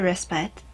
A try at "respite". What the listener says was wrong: Respite is without the E. Respite.